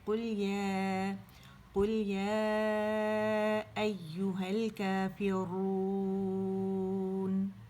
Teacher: واو کے اوپر ساکن تھا, کیونکہ یہ واو مدہ بن رہا ہے, یعنی واو ساکن اپنے سے پہلے پیش کی آواز کو کھینچ رہا ہے